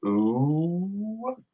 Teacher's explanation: if you say the vowel oo and you keep going, oo, you can kind of hear a W at the end of it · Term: W sound